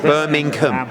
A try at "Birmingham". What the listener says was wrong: Yeah, it's no, but you're missing a G. It's not a silent. It's not like knock it.